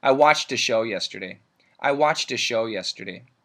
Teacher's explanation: in this case the D links into the a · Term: the D sound